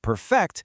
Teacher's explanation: you move the stress to the second syllable, perfect, it becomes a verb